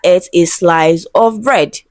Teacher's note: the emphasized word is bread. The most significant word is bread. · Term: emphatic stress